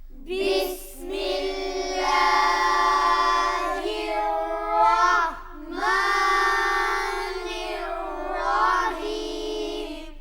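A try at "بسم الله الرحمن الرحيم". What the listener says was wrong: بسم اللہ کا نام زیادہ لمبا نہیں کر رہا، اور الرحمن الرحیم اس کا ابھی جو کھڑا زبر ہے اس کو زیادہ لمبا نہیں کرنا۔ بسم اللہ الرحمن الرحیم۔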